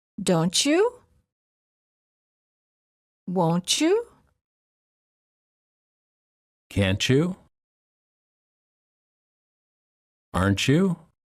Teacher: t+ Y is usually pronounced as CH as in church